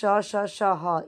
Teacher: इसको संघर्षी व्यंजन बोलते हैं।